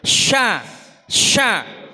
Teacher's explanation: Huruf yang keluar dari tengah lidah yang mengeluarkan apa itu suara yang keras, syah itu ya. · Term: tafasyi